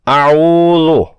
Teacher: اعوذ میں حمزہ اور عین دونوں حروف حلقی ہیں، دونوں کی آواز الگ الگ سنائی دینی چاہیے۔ عین کی پیش کے بعد واو مجزوم ہے، جس سے دونوں مل کر واو مدہ ہوتے ہیں۔